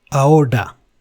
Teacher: in ahora, which means now, the R is not rolled. So it is softer. It is just one D, not several dr.